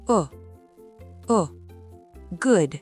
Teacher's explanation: Pour le son o, la bouche est plus détendue. C'est un ou très court.